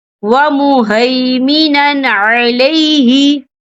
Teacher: ہم اسے بنا غننے کے پڑھیں گے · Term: اظہار